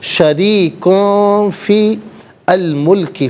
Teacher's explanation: شریکون فی الملکی، فا کے نیچے زیر، اس سے الملکی کے لام ساکن کے ساتھ ملائیں گے، درمیان میں سے الف یعنی حمزہ کو حذف کریں گے، فی الملکی پڑھیں گے